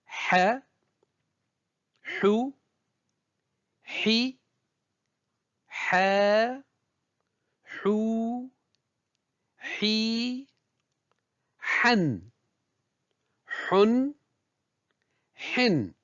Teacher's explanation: elle se prononce au niveau du milieu de la gorge au niveau de l'épiglote on entend une sorte de frottement sec au passage de l'air